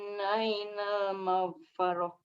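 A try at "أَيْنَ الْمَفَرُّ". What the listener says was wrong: Sukun ya. Mafar pendek. Ainal mafar.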